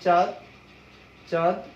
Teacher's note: যখন আমরা একটা শব্দ বলি চাঁদ, চাঁদ, তখন কিন্তু কি হয়, একটু চয়ের সাথে যে স্বরে আছে এটা একটু নাসিক্য হলো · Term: নাসিক উচ্চারণ